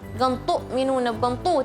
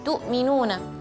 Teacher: ketika membaca harf ta yang berharakat dhammah, tidak boleh dibaca tebal